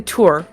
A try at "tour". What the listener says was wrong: Tour. Yeah, you're pronouncing the OU separately.